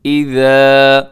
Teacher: سب سے پہلے اذا، اسے اپنے لمبا کرنا ہے، ذال کا خیال رکھنا ہے، اسے زا نہ پڑھیے گا۔ اذا، بہت نرمی کے ساتھ آپ نے اس کو ادا کرنا ہے۔